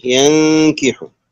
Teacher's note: نون ساكنة بعد حرف الكاف إخفاء حقيقي